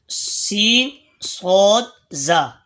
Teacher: زبان کا کنارہ سامنے اوپر کے دانتوں اور نیچے کے دانتوں سے مل کر ادا ہوتے ہیں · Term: حروف الاصلیہ